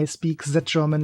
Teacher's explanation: more common for the German english- speaking stereotype to have z z z sound